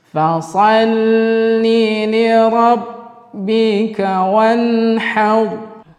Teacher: Di situ ada nun yang bertemu ha, termasuk dari hukum tajwid izhar halqi, ya, izhar halqi. Nun bertemu dengan ha, maka kita baca izhar halqi, artinya jelas di dalam tenggorokan. Wanhar, di situ juga ada huruf ra tafkhim kembali karena ra yang sukun sebelumnya berbaris fathah.